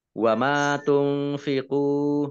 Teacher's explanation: nun sukun bertemu dengan huruf fa, bacaan ikhfa dibaca samar-samar.